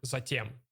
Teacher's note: They don't pronounce it as t, yeah? They pronounce it as ch.